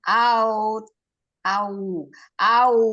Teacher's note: Aunya jangan a ya tapi au. Majukan dulu bibirnya.